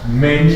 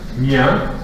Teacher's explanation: La réduction de la diphtongue IE. Donc elle peut intervenir devant une nasale, devant une palatale, comme on voit dans la fiche suivante.